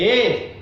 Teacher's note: अर्ध समृद्ध, half close, मुख द्वार आधा बंद है